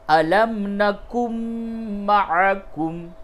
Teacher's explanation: گے، نون ساکن کے بعد میم آیا، ادغام مع الغنہ ہوگا، یعنی کہ نون کو میم سے تبدیل کر کے اور میم کو ملا دیں گے